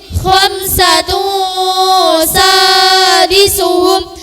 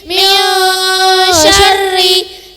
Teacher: suara samar dan dengunnya terdengar NY dan NG